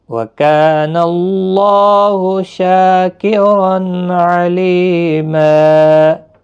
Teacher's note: دو زبر کو بدل کر ایک زبر کے ساتھ وقف کریں گے، الف مدہ بنے گا، ایک الف کی مقدار کے برابر کھینچ کر وقف کریں گے۔ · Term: وقف بالابدال